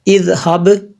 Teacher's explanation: یہ آخر پہ با قلقلہ ہے، اس لیے میں نے قلقلہ کیا یہاں پہ